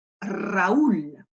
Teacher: le r en début de mots vaut pour un double r donc il va falloir rouler plusieurs fois bien insister